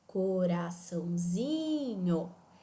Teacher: a pronúncia adequada da palavra mesmo arrastando Esse i e portanto a sílaba tônica nesse caso vai ser a sílaba Zi · a sílaba tônica, nesse caso, vai ser a sílaba ZI. Mesmo eu tendo uma sílaba marcada com o tio, a sílaba tônica é a sílaba ZI, porque o tio não marca tonicidade, não marca intensidade de pronúncia.